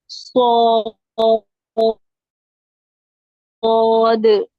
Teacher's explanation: सीन में जो सीटी की आवाज आती है ना, वो आवाज स्वाद में सीटी की भी आनी चाहिए, स्वाद। स्वाद, सुने, थोड़ी सी आवाज आपकी सीटी की आई बाहर, स्व, स्व।